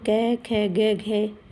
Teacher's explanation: जब हम कै ख ग घ इस पहली लाइन को बोलते हैं तो कंठ से आवाज़ आती है